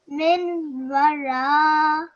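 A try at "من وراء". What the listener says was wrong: What is this here? This is not a vowel, this is a ha. I know why you might be getting confused, but this is a ha.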